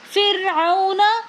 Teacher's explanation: فرعون میں جو واو ہے یہ واو لین ہے، کیونکہ واو ساکن اور اس سے پہلے زبر ہے تو واو لین کو ہم جلدی سے پڑھیں گے نرمی کے ساتھ بغیر کھینچے۔